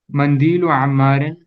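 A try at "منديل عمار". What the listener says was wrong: It's not mandilu, it's mindilu.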